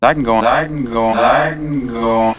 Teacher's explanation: The initial k sound turned into a g sound. The n at the end turned into a ng sound, as in king.